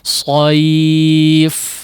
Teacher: Nah, ya tidak dipanjangkan ya, tidak sengaja dipanjangkan atau terlalu panjang, tidak juga sekejap terlalu singkat ya, dengan menutup kedua pita suara sehingga udaranya habis ya, diputus begitu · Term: huruf fa